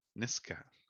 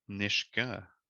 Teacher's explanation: you would have said Niska with a K sound. Niska. You said Nishga with an SH sound.